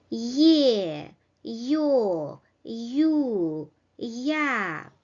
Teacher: They are pronounced with semi-vowel or glide the y before the vowels e, o, u, a.